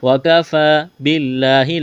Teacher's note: کڑا زبر ہے، اس یا کو نہیں پڑھیں گے، وَكَفَى بِاللَّهِ، لفظ اللہ کے نام سے پہلے زیر ہے، لفظ اللہ کے نام کو باریک کرنا ہے